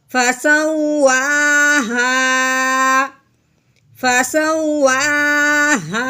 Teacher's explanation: وقف کی صورت میں اب ہم نے صرف اس کی آواز کو نیچے کی طرف لے کے آنا ہے، یوں محسوس کرنا ہے اور کروانا بھی ہے کہ یہاں پہ بات مکمل ہو گئی ہے۔